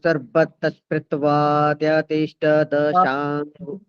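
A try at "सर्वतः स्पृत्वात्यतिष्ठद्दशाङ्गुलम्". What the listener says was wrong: सर्वतस्पृतवा एकदम से नहीं, आप भगना नहीं है, आराम से। सर्वतस्पृतवात्यतिष्ठदशाङ्गुलम्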